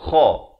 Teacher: Kha ni makhrajnya di hujung kerongkong